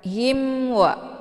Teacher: Kemudian himwa ada mim sukun bertemu dengan huruf waw, dinamakan dengan idhar syafawi. Cara bacanya, mimnya dibunyikan secara jelas atau jelas bunyi M-nya. Cukup ditekan saja, tidak perlu ditahan.